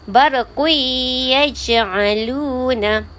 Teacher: Tanwin bertemu dengan ya dengan dengung 2 harakat. Ni hukum idgham ma'al gunnah.